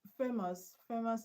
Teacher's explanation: The stress is on FA